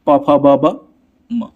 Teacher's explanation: ये प वर्ग के जितने भी वर्ण होते हैं किससे बोले जाते हैं? ओठ से बोले जाते हैं